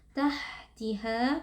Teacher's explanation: pastikan huruf ha di situ mengalir nafas dan juga suara karena huruf ha bersifat hams dan juga rokhawah.